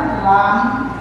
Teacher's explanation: জিহ্বার আগার কিনারা উপরের দাঁতের গোড়ার সঙ্গে লাগায়া